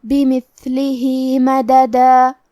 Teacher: آخری میں ہاں کے نیچے کھڑی زیر ہے، یہاں حکم ہے مد صلہ صغرا، مطلب ہم اپنی آواز 2 مد کے برابر لمبی کریں گے۔ بمثلہ مددا، کلمت مددہ میں میم پہ دال پہ زبر ہے تو ہم یہ دونوں زبر کو برابر سے ادا کریں گے۔ · کلمت بمثلہ میں ثا کی ادائیگی زبان کے سر اور اوپر والے دانتوں کے اندرونی کناروں سے ہے، اور کیونکہ ثا ساکن ہے تو ہم ثا کو ہمزے سے پڑھیں گے۔